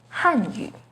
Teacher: a quick example the pinging and tone for hanyu is with the fourth falling tone on han hanyu the ping and tone for hanyu has a second rising